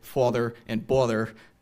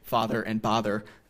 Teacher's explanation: typically other American English speakers will pronounce words like father and bother as a perfect rhyme